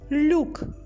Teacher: Ми чуємо М'який приголосний л м'якістю поділилася буква ю собі залишила лише голосний звук у лук Ми чуємо у кінці